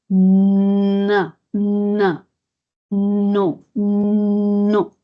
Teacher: la N, cuando digo na, de na, sin pronunciar la vocal, el aire sale por la nariz · Antes de decir la O, el aire sale por la nariz.